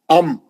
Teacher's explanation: दांतों का कोई इस्तेमाल नहीं है जबान का कोई इस्तेमाल नहीं है सिर्फ होठ सिर्फ होठ अम दोनों होठों का दोनों को दोनों होठों का सख्ती से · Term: मीम